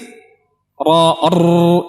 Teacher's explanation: ujung lidah dan sedikit dari punggungnya kita letakkan di ujung langit-langit. Kemudian kita getarkan. Kita keluarkan suara dan kita datangkan sifat takrir, sifat yang bergetar.